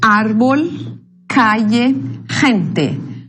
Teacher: Palavras llanas ou graves, também chamadas paroxítona. La sílaba tónica é a penúltima